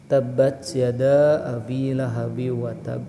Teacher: Lihat di ba akhir ada tasydid ya. Maka bacanya adalah tasdidkan terlebih dahulu baru qalqalah